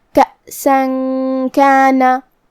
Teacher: کاف حروف الاخفاء میں سے ہے اور اخفاء کا معنی ہے چھپا دینا، تو ہم یہاں تنوین کو چھپاتے ہوئے اور غنہ کے ساتھ یہ حکم کو ادا کریں گے